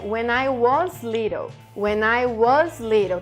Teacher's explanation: Tá vendo que tem uma entonação rápida, o was ele passa rapidinho, mas ele precisa ser pronunciado.